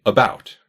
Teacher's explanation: that first vowel in that word is a quick, almost nondescript vowel that's more similar to than anything else.